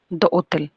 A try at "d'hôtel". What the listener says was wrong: দোতেল এইচটা নাই মাঝখানে।